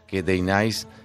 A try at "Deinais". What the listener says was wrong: Se pronuncia Dainis, se escribe Deinais.